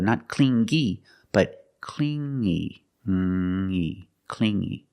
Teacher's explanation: You hear the sound only the nasal sound here, no G